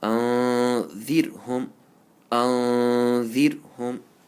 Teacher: ra sakin, when there's a zer before it, you have to pronounce it very lightly with the empty mouth.